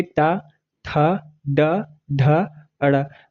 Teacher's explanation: जब आप कहेंगे टा, ठा, डा, ढा, अड़ा, आप एहसास करके देख रहे होंगे, बोल के देखिएगा तो पता चलेगा कि हाँ, जीवा सच में मूर्धा को स्पर्श कर रही है, इसलिए इस वर्ग को मूर्धा स्थान दिया गया है